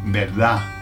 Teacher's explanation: the Spanish don't pronounce the last d. Either they'll say berdaf with a beraf or they'll say nothing like they'll leave it hanging like berda.